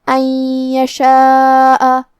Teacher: کلمت یشاء یا حروف الادغام بغنہ میں سے ہے، اور ادغام کا معنی ہے حرف کو حرف میں داخل کرنا. تو ہم یہ نون ساکن کو یا میں ملا کے غنہ اور تشدید کے ساتھ یہ حکم کو ادا کریں گے